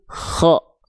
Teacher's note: nafas dari huruf K itu tidak selembut huruf ha kecil · Huruf kha itu keluar dari tenggorokan atas atau bagian terluar dari tenggorokan kita. Nama istilah dalam tajwidnya adalah adnal halqi atau ujung tenggorokan ya, dengan mengalirkan nafas seolah seperti mengorok atau mendengkur.